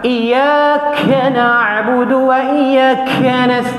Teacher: Dan kaf pun tak boleh kita sebut terlalu angin dia kuat.